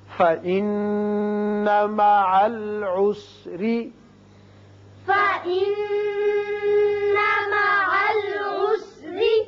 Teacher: نون مشدد ہے، غنہ کریں گے اور یہاں را کے نیچے زیر ہے، را باریک پڑا جائے گا.